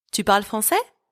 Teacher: Now, to make this a question using our first method, which is using intonation, I am just going to raise my voice at the end of that sentence. · You raise your pitch at the end of a sentence.